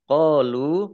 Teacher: Qalu, qafatkah alif, mat tobi'i. Lam domah wawu sukun juga mat tobi'i, panjang 2 harokat.